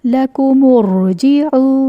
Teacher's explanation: لَكُمُ الرُّجِعُ ضمہ ہے تو ضمہ کو را ساکن سے جوڑ دیں گے، لیکن کیونکہ یہاں پر حمزۃ الوصل ہے تو حمزۃ الوصل کی وجہ سے یہ را ساکن موٹا پڑھا جائے گا